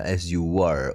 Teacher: Ketemu A jadi disambung pakai W